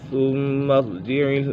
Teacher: میم مشدد ہے، میم مشدد میں ہمیشہ غنہ ہوتا ہے